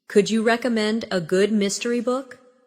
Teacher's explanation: Notice how the stress naturally falls on recommend and mystery.